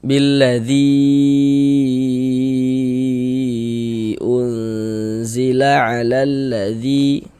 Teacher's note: Jadi dalam dua kata yang berbeda atau di lain kalimat kayak gitu, maka dia berubah menjadi mad jaiz munfasil. Panjangnya mad jaiz munfasil itu dibaca dengan panjang 4 sampai dengan 5 harakat.